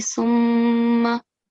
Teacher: You have to do the nasal sound and you have to do it double. So you have to make it double, summa, but nasal sound.